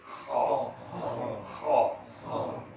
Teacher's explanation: Kho dengkur, mesti dengkur. Tolak dia menjadi kho. Apabila dengkur tadi tolak keluar kho dengan pantas, maka dia menjadi kho yang on.